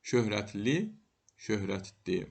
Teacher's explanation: Ö birləşməsində x samiti düşmür.